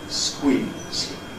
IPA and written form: skwiːz (squeeze)